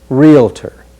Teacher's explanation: be careful not to let an extra vowel creep in after real